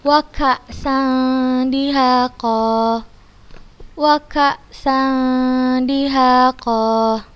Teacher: Kita membacanya dengan samar. Kita samarkan, kita masukkan ke huruf dalnya. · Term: ikhfa hakiki